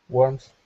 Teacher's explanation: it sounded like you had an S sound at the end, but just try and stick with that th sound